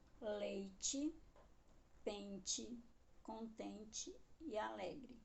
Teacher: algumas palavras são escritas com no final, mas podem ler o som de i.